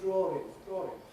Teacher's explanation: it’s a habit of having an [r] between [ɔː] at the end of one word and the next word beginning with a vowel. · they even put an [r] in the middle of a word like ‘drawing’ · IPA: [ˈdrɔːrɪŋ]